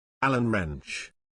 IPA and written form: ˈæl.ən ˌrentʃ (Allen Wrench)